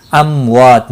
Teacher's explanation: میم ساکن کے بعد واو آیا ہے، اظہار شفوی ہوگا، وا الف مدہ ہے، 1 الف کے برابر کھینچ کر پڑھیں گے اور وقف کی صورت میں تا ساکن پڑھا جائے گا۔